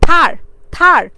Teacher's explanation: আমাদের কিন্তু জিহ্বা কিন্তু আমাদের উপরের দাঁতকে গিয়ে ধাক্কা দিচ্ছে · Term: ডেন্টাল সাউন্ড